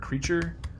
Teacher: that final er is uh syllabic er